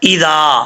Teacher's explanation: حمزہ کے بعد ذال آ رہا ہے، ذال بغیر سیٹی کے ساتھ پڑھا جائے گا۔ جو دال کی شکل میں ذال آتا ہے اور اس میں وہ سیٹی نہیں آتی، بغیر سیٹی کے پڑھا جاتا ہے۔